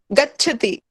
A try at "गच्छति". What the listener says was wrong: हाँ, च और छ दो अक्षर हैं। गच्छति, छ एकाकी नास्ति। गच्छति।